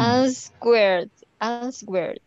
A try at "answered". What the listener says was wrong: In this case, esta W is mute.